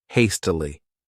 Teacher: This word has three syllables and the stress is on that first syllable.